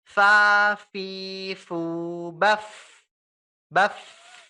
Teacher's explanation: ujung gigi atas bertemu dengan bibir bawah bagian dalam, ya. Itu adalah fa.